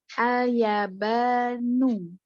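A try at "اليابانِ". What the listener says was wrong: Kalau ini al-yabani, ini harokatnya kasroh Umi. Kasroh ya. Karena ya ini ya salah satu nama tempat Iya, ghairu munsorif ya.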